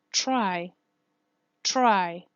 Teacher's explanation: The DR is always the T and the R. Yes, the T will suffer postalveolar assimilation, and the R, yes, will suffer devoicing, always. For example, in the word try, try. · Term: fricative devoiced R